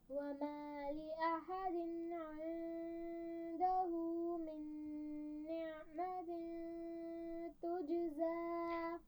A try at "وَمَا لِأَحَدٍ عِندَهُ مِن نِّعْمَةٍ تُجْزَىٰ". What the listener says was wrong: لأحد میں حمزہ کو واضح کریں گی، دوسرا نعمتن، عین کی آواز پہ روکنا نہیں چاہیے، نعمتن ایسے نہیں پڑھنا، نعمتن، ٹھیک ہے۔ دوبارہ پڑھیے آیت کو۔